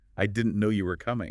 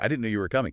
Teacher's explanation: But now, try it with a little lift, a little emphasis on no and coming.